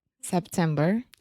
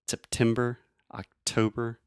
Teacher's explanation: I'm really aspirating which means I'm breathing air out of my mouth and went making that pop sound September October think about the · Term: true tea